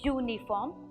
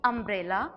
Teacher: the vowel U sounds as if it's a consonant Y. Uniform, year effect is more prominent.